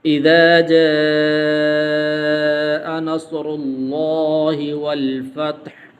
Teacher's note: یہاں پر جو ہے مد موجود ہے، تو اس مد کو 5 الف کے برابر لمبا کرتے ہیں · را یہاں پر اس کے اوپر پیش موجود ہے، تو اس کو موٹا کر کے پڑھیں گے.